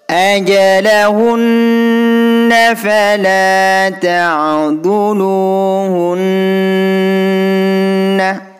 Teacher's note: Hunna di sini juga nun tasydid, bunyi hun ini didengungkan 2 harokat. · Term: gunnah musyaddadah